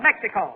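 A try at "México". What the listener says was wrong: The Spanish pronunciation is Mexico. You make the X sound like an H, you see? Mexico.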